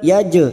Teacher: jim sukun yang mati asli di tengah kalimat qalqalah sugro